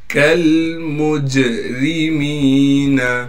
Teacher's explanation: کاف کو لام سے ملا دیں گے اس لیے کہ لام ساکن ہے. پھر میم کو جیم سے ملا دیں گے اس لیے کہ جیم بھی ساکن ہے اور جیم پر قلقلہ بھی کیا جائے گا. اور را کو باریک کر کے پڑھیں گے اس لیے کہ را کے نیچے زیر ہے.